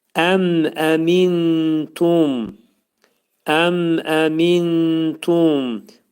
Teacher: İzhar oxunmalıdır. Və mim hərfini tələffüz edərkən ağız bağlanır. Yəni mim hərfi şəfəvi hərfdir. Yəni dodaq hərfidir. Ağız bağlanaraq mim səsini izhar edirik.